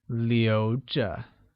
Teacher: Keep translates as 留着, which is pronounced using a mid-rising tone